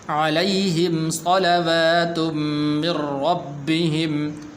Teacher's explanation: را کے اوپر شد ہے، را کو پر کر کے پڑھنا ہے